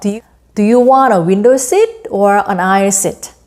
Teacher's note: A는 rising intonation, B는 falling intonation을 취하면 됩니다.